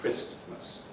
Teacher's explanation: Christmas has lost its T. That's become elided.